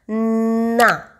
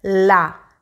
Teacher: ना में वाइब्रेशन नाक पे हो रही है क्योंकि वो नेज़ल साउंड है